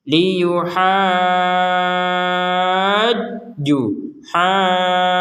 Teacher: harakat kemudian setelah dipanjangkan enam harakat baru ditekan kepada huruf Jim dipanjangkan dulu baru ditekan ke huruf Jim